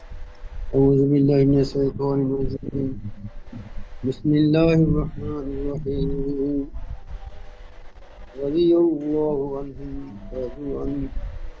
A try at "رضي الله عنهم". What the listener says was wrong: রাদিয়াল্লাহু, রাদিয়াল্লাহ খাড়া যাবার এক আলিফ টান দেন, রাদিয়াল্লাহু আনহুম